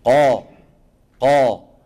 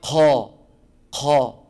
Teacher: القاف العربيه يا اخواني مجهور قا قا وليس وليس وليس اسمعني وليس ق ق سمعين الهمس